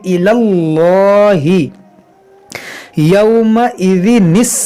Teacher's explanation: इसमें जलालत से पहले ज़बर है तो इसको हम मोटा पढ़ेंगे। यहाँ पर या खाली है, अलिफ खाली है, ये लाम खाली है, तो ये तीन हर्फ नहीं पढ़ेंगे, इसको पढ़ेंगे इलल्लाहि यौमइज़िनिस्सलम।